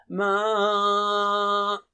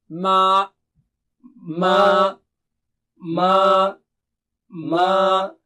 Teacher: ناک سے آواز نہیں آنی چاہیے سوائے غننے کے، اور یہاں غنہ نہیں ہے